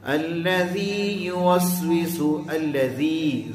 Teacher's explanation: الذی زی کو کھینچیں گے کتنا؟ 2 حرکت کے برابر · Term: یا مدہ